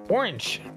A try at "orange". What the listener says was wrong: Yeah, why are you doing that part at the end, though? O-R-A-N-C-H. That's what you're saying. Orange.